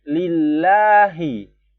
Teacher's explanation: Hi-nya di tenggorokan bagian bawah. Beda bunyinya.